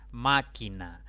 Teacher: Máquina es una palabra de 3 sílabas. La mayor intensidad recae en la antepenúltima sílaba. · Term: esdrújulas